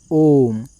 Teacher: ओम में आपको लग रहा है तीन मात्रा का समय। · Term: प्लु स्वर, प्लुत स्वर